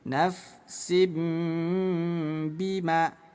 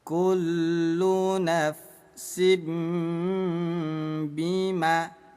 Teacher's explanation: Jadi bunyi tanwin ditukar menjadi bunyi m.